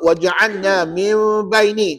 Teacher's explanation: Hukumnya iklab. Kat situ ada hukum iklab, kena dengunglah dua harakat.